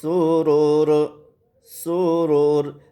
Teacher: سین پر سیڑھی کی آواز ہے، اس کا بھی خیال کرنا ہے